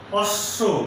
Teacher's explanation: যেমন অশ্ব একটি শব্দ, এই শব্দের শেষে তালব্য স এর সঙ্গে ব ফলা আছে, এই বয়ের উচ্চারণ হবে না, কিন্তু তালব্য স এর উচ্চারণ 2 বার হবে